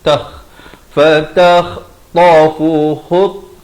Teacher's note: Minas, bukan minal tetapi minas samai fatah, kha di hujung kerongkong